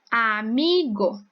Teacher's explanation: a sílaba mais forte da palavra amigo é o me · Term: paroxítona